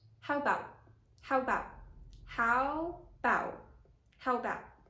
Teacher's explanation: the schwa in the first syllable is either very short or just dropped whatsoever. So people often say either how about, with a very short schwa or without it.